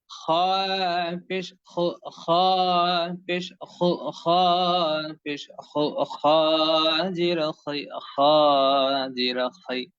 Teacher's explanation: হলকের শেষ হতে আপনার খ অক্ষরটি উচ্চারণ হয়ে থাকে। হলক মানে হচ্ছে গলা, আর গলার শেষ হতে ওটা মোটামুটি অটোমেটিক্যালি হয়ে যাবে ইনশাআল্লাহ।